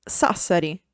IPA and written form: ˈsassari (Sassari)